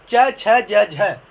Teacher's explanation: च, छ, ज, झ और तालव्य स, ये कहाँ से बोले जाते हैं? तालु से बोले जाते हैं।